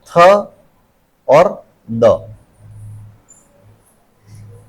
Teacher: इसमें होता क्या है, डेंटल में क्या होता है, टिप ऑफ ब्लेड, मतलब ब्लेड ऑफ द टंग, जो हमारी जीभ है उसका आगे का जो हिस्सा है वो placed between द upper and lower teeth, ऊपर और नीचे के दांतों के बीच में रखा जाता है, against द back of द upper teeth. · ठीक है। कि हमारी जो जीभ है वो ऊपर के दांतों से जब छूती है तो ये बनते हैं